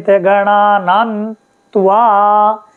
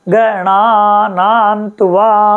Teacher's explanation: इसी प्रकार से कोई भी मंत्र आप लेंगे तो जैसे गणानान्त्वा, ये समझ लीजिए, तो गणाना में आ है, फिर ना है, नान्त्वा ये है, देखो। तो ग को थोड़े में बोलेंगे, गणा में बड़ा करेंगे क्योंकि आ की मात्रा है, गणा, फिर ना में भी बड़ी मात्रा है, गणा ना, आधा न और वा के साथ में गणा नान तुआ। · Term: दीर्घ